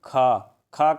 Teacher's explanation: इसमें हवा जो है बाहर निकलेगा महा इसमें हवा ज्यादा बाहर निकलेगा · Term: महाप्राण